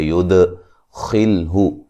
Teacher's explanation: دال پہ قلقلہ کریں گے